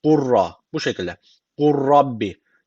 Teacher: Cezimli lam şu cezimli lam hiç okunmuyor. U'yu direkt ra'ya bağlıyoruz. Ra şeddeli okunuyor. Bu kadar. Gurra.